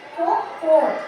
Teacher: O último co é mais forte.